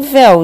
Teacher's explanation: eu vou da vogal para a semivogal. Então, eu tenho um ditongo decrescente